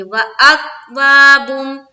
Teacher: یہاں کوئی قلقلہ والا حرف ہے بھی نہیں اور زبردستی کا بس قلقلہ کرتے جا رہے ہیں، کیونکہ تجوید کی معلومات ہی نہیں ہے، تجوید کا پتہ ہی نہیں ہے، اسی لیے ہر جگہ بس اپنی مرضی سے قلقلہ کرتے چلے جا رہے. تو اس بات کا خیال رکھنا ہے کہ کاف میں ہماری آواز رک جانی چاہیے